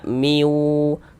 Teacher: di bagian miwun-nya itu suaranya itu kita tahan, kita panjangkan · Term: idgham bighunah